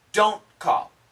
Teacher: usually this T sound, we just cancel it. It stops.